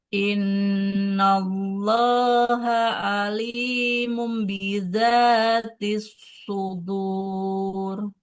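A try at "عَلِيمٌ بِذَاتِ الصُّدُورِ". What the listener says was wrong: Jangan buru-buru di alimumnya, ditahan dulu. Alimum.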